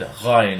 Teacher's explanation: And also, when it is dotted, it's actually a ghain. A ghain is a sound that's a GH sound pronounced back in the mouth. Unlike ghimel, which is a GH sound pronounced higher in the mouth.